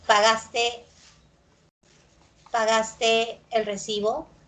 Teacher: tono ascendente ya sabes preguntas totales